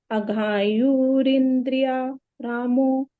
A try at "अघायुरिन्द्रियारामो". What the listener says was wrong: अघायु इंद्रिय रामो नहीं, अघायु इंद्रिय आरामो। आरामो। आरामो। आ इंद्रिय, यह तो इंद्रिय में चला गया। बचा आरामो।